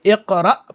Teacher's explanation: جو حمزہ آ رہا ہے جس کے اوپر جزم ہے، اس کو جھٹکے کے ساتھ پڑھیں گے